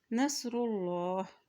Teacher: अल्लाह के नाम से पहले पेश है तो अल्लाह का नाम मोटा अदा किया जाएगा